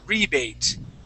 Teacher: All right, now this word here, we would say rebate. Okay, so the accent goes at the very beginning of the word.